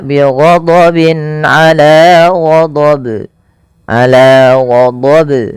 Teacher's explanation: tidak menambahkan hamzah dan dia harus memantul